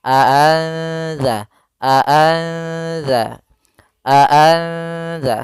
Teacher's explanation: Sehingga kalau samar-samar berarti kalau di ikhfa itu di antara keduanya masih ada suara nunnya sedikit tapi disamarkan ke huruf setelahnya. Maka di sini cara membacanya adalah nunnya disamarkan kepada huruf zal.